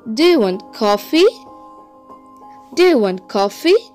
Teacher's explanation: for the yes or no questions you will have a raising intonation